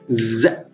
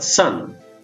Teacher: that Z sound here is voiced s is voiceless